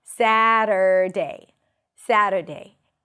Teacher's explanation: You start with the syllable sa, that's the primary stress. Then we have a flap T and a schwa. Satter, end it with an R.